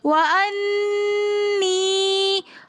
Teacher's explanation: پھر یا مدہ ہونے کی وجہ سے ہم 1 الف کی مقدار کھینچ کر پڑھیں گے یا کو